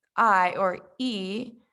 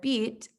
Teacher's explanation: are producing the phoneme i or e in the word beat this has a front high tongue position